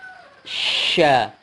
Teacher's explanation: salah satu sifatnya adalah tafasyi, menyemburkan banyak udara